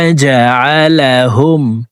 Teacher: জিম হরফকে জিহ্বার মধ্যখান থেকে উচ্চারণ করব